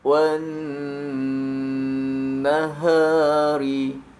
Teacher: Maka bila huruf nun berharokat tasydid, maka ucapkan bunyi nun dengan dengung, ditahan 2-3 harokat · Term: bunyi dengung